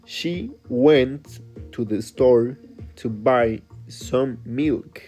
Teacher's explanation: the stress word are went, store, and milk. And the other words are way faster. · you can watch how the stressed words are went, store, and milk